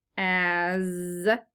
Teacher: And I put that voice line on the S because the S is making the Z sound, so it's making the voice, your vocal cords will vibrate when you say that sound, so we put the voice line on it.